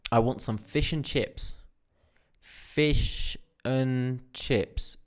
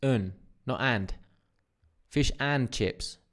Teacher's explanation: we actually get rid of the duh and we reduce this down to an uh not an a n so this would sound like I want